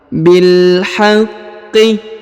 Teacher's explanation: Huruf qaf ditahan dan ditekan ya karena berharokat tasdid.